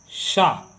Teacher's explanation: शीटी वाले शा का उच्चारण स्थान तालु से है